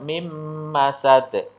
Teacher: Jadi nun sukun ketemu dengan mim. Maka nun sukunnya hilang, tidak dibaca. Langsung masuk mim masad. Ya, ditahan 2 harokat. Mim masad. Nah, jadi 1 ayunan atau 2 harokat. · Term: idgham bi gunnah